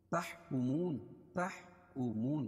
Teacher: واو ساکن سے پہلے پیش ہو تو واو مدہ، اس کو ایک الف کے برابر کھینچ کے پڑھیں گے. نون پر وقف کریں گے تو اس پر جزم لے کر آئیں گے تو یہاں مد عارض وقفی ہوگا.